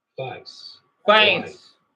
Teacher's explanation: the diphthong in face starts real low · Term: face lowering